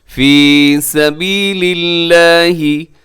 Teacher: یہاں لفظ اللہ کو باریک پڑھیے گا، لفظ اللہ کے سے پہلے لام کے نیچے زیر ہے تو ہم اس کو باریک پڑھیں گے۔